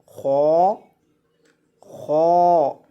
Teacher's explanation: خو خو یہ جو خو ہے اسے موٹا کر کے پڑھا جاتا ہے۔ خو کو جب بھی پڑھیں موٹا کر کے پڑھتے ہیں۔ خو موٹے حروف میں سے ہے۔